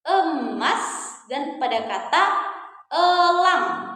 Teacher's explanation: Selanjutnya kita punya bunyi vokal e madya atas tengah. Contohnya pada kata emas dan pada kata elang.